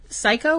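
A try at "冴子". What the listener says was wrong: Psycho? I can see how it's spelled. Psycho. You gotta put the E in there, because otherwise it sounds like you're saying psycho. As in psycho killer. Psycho.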